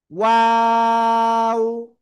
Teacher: 3 আলিফ টান হবে দুই ঠোঁট গোল করিয়া